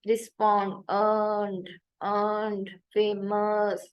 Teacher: made in the middle of the mouth with the body of the tongue raised to mid height. The tongue should be mostly relaxed. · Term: schwa